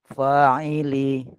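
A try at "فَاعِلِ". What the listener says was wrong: Fa'ili. Fa-nya panjang.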